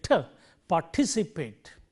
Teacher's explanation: And remember, when we stress this syllable, because the t occurs in the initial positions of the stress syllable here, it gets aspirated.